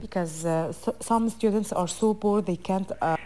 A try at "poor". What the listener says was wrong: they're so poor, so you need to pronounce that P with more aspiration.